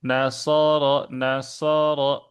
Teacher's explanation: O-nya itu muncul dari bagian pangkal lidahnya naik ke atas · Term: sifat isti'la